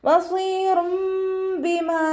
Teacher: തെൻവീനിന് ശേഷം ഇഖ്ലാബിൻ്റെ അക്ഷരമായിട്ടുള്ള ബാ വന്നു. തെൻവീനിലുള്ള നൂനിനെ മീമാക്കി മാറ്റിമറിച്ച് ഒന്നയോടുകൂടി ഒതിക്കൊടുക്കുക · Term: ഇഖ്ലാബിൻ്റെ മീമാണ്